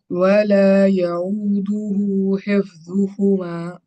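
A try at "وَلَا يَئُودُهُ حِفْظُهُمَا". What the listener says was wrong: ولا یعودہ، حمزہ ہے، حفظهما. ولا يؤوده حفظهما، حادا کرنا ضادا کرنا.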